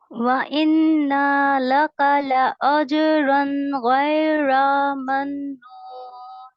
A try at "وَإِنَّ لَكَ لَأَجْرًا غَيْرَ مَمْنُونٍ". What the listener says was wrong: ٹھیک ہے دوبارہ نون میں کھینچ گئی فتحہ. وَإِنَّ لَكَ لَأَجْرًا غَيْرَ مَمْنُونٍ.